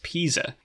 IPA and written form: piː.zə (pizza)